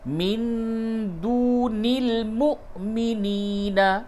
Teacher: کہ یہ پورا ایک ہی کلمہ ہے، اولیاء من دون المؤمنین، نون ساکن کے بعد دال ہے، اخفا کیجئے